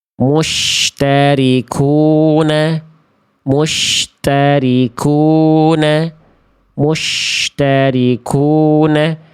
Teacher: huruf syin ini dilafalkan memonyongkan bibir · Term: bibir centil